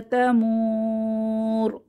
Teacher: ফাইযা হিয়া তামুর, 3 আলিফ টেনে ওয়াকফু করব, মাদের হরফের পরের হরফে ওয়াকফু করছি তাই।